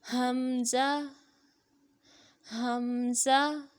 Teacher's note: حلق کے آخر سے جو سینے کی طرف ہے وہاں سے حمزہ بھی ادا ہوتا ہے